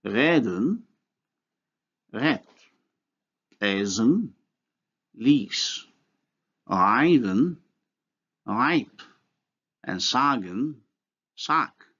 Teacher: In German, only the voiceless sound occurs in word final position. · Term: neutralization